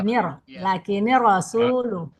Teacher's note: jadi masuk suara langsung ke ro dari ni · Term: idgham bila gunnah